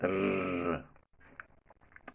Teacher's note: Then there is only one post-alveolar sound. That is, the sound is produced just at the back of the teeth ridge. That is where the tip of the tongue touches.